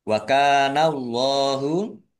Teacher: Wa kana Allahu kafatkah alif mat tabi'i panjang dua harokat. Allahnya dibaca tebal karena harokat di depannya fathah.